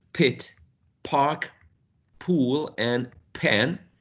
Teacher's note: pit park pool and pan they are all aspirated because they are in initial position